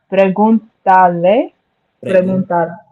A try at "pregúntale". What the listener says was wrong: So like if you're saying tale. So you're putting an extra sound on it. Tale, pregúntale, or preguntale. Pregúntale.